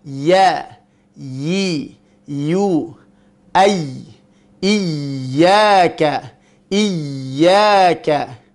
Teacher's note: Pada huruf ya memiliki sifat. Yang pertama sifatnya adalah ar-rakhawah. Berjalannya suara.